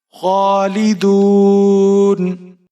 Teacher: खा को आपने मोटा पढ़ना है और एक अलिफ के बराबर खींच कर पढ़ना है, खड़ी जबर है।